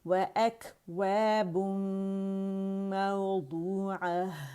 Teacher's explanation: مد اصلی بن رہا ہے، واو مدہ ہے، 2 کاؤنٹ کے لیے آواز اس کی گول ہوگی، کھینچیں گے، اس کے اسٹریچ کریں گے.